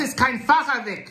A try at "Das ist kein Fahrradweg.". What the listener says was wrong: We need the T. The T is necessary in the whole sentence. Das ist kein Fahrradweg.